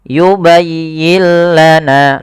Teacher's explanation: setelahnya maka ini kita namakan dengan bacaan Idgham bila ghunah maka cara membacanya nunnya dimasukkan ke huruf lam dan itulah yang kita namakan dengan Idgham